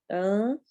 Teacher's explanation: اخفا ہوگا، نون ساکن کے بعد فا ہے